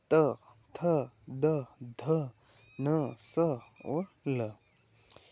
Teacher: से किनकी आवृति होती है या किनका उच्चारण होता है तो त थ द ध न स और ल यह दांत से उच्चारण होता है